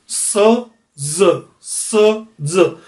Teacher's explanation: टिप जाके मिलेगी alveolar पे।